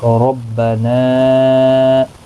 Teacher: یہاں پر مد منفصل ہے، تین الف کی مقدار کے برابر کھینچ کر پڑھیں گے